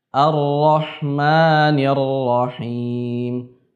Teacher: Sifat takrir harus ada, akan tetapi hanya tipis.